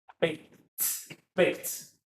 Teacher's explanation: 你看这个 baked 这个 ed 变成 T 的发音 so B A K K 是清辅音所以这个会影响到 ed 的发音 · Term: T ending